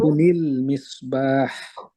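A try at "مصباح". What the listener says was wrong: সুন্দর, মাশাআল্লাহ।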